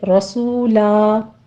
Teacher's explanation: رو مفخم پڑھتے ہوئے آگے واو مدہ ادا کریں گے اور آخر پر وقفے ابدال کر لیں گے، رسولا، 2 کاؤنٹ